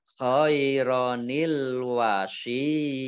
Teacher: mat tamkin itu adalah ya tasdid yang harokat di depannya kasroh. Ini dibaca panjang 2 harokat.